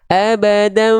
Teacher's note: Dia nempel lunak-lunak saja sampai kerasa ada getaran dengan jelas di bibirnya. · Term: iklab